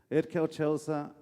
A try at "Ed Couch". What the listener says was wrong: You keep saying Ed Koch. It's not Ed Koch, it's Ed Couch. Yes, like that. Ed Couch.